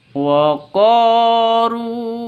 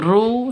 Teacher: ru panjang, 2 ketukan ya, panjang 2 ketukan karena ada waw mati diawali dengan dhammah, atau waw mati, ada waw mati sebelumnya itu ada dhammah, begitu. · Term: mad tabi'i